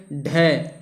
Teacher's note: तो साथियों, वे व्यंजन जिनको बोलते समय जीभ ऊपर उठकर मूर्धा को स्पर्श करे और फिर झटके के साथ नीचे आए, उसे हम लोग उत्क्षिप्त व्यंजन कहते हैं।